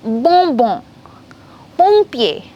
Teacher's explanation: So whenever it comes ON, OM together, it will be on sound, nasal sound.